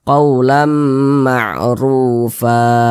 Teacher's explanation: huruf ra memiliki tanda baca dhammah nih, berarti huruf ra-nya dibaca tafkhim lagi. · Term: dibaca takhim